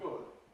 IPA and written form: gʊd (good)